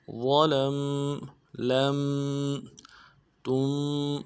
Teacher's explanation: لام کو میم کے ساتھ ملانا ہے، میم ساکن میں غنہ کریں گے ، ظلم لم تم، تا کو میم ساکن کے ساتھ ملانا